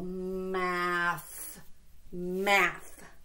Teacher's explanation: every single time I said that th sound my tongue came out